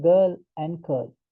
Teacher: The tip of the tongue moves towards the hard palate that is called as retroflexion.